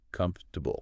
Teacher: They get completely swallowed. It goes from 4 syllables down to 3, maybe even 2.5 sometimes.